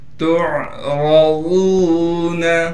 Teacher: تعرضون، تا کو عین سے ملا دیں گے اس لیے کہ عین ساکن ہے۔ عین کو صاف کر کے گلے سے نکالیں گے۔ را کو موٹا کر کے پڑھیں گے اس لیے کہ را پر زبر ہے۔